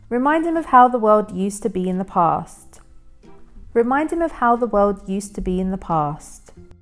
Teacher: notice how I left out the H in him and connected with the previous word as remind him. This also even links with of, remind him of. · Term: linking